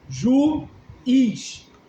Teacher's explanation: no caso juiz, tanto o ju quanto o is são longos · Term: hiato